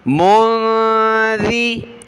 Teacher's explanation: انما انت منذی، نون ساکن پر ناک میں آواز پیدا کی، میم کو نون کے ساتھ ملا کر، اور ذال پر ہم نے زبان نکالنی ہے، اس کی جگہ ہم نے زا نہیں پڑھنا